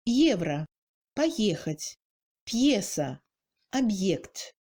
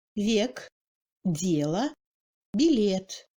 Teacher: En ce qui concerne le E accentué, on entend ce E comme celui des mots français hier, première, derrière, etc. Ni trop ouvert, ni trop fermé, plutôt relâché vers la fin du raisonnement.